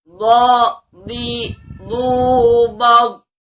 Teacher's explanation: Dia mempunyai sifat huruf itbaq. Jadi baik fathah, kasroh ataupun dhammah, dot ini selalu mempunyai sifat tebal.